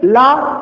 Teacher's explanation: ला लुंठित नहीं है, लुंठित नहीं मतलब पार्श्विक है